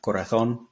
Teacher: bit of that buzz in the Z just remember to pronounce pronounce it with an S if you're you know Latin American Spanish or Spanish with a th sound